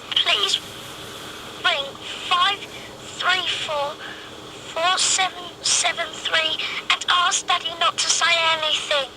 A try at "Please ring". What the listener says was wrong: Little things, like the way the emphasis is wrong in please ring as opposed to please ring.